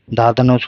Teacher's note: धा धनुष हो गया सघोष महाप्राण